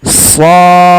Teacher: shadnya sepanjang 6 harokat, baru mantulkan di huruf dalnya.